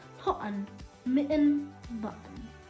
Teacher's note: But in American, there are glottal stops like cotton, mitten, button.